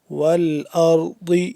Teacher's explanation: ضاد کا مخرج ایک دفعہ پھر بتا دوں، اس کا جو مخرج ہے زبان کی بائیں کروٹ کو آپ اوپر والی داڑ کے ساتھ جب ٹچ کریں گے تو ضاد اپنے مخرج سے ادا ہوگا